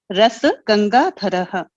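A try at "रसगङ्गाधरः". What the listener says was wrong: Because you can't bring the influence of Hindi into the Sanskrit pronunciation. Because when you say ras, it is ra. This is ras. There's a halanta below it. This is ras. This is rasa. So you have to be clear because the meaning will change.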